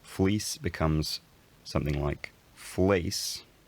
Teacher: the fleece vowel fleece diphthongizes as it has in some dialects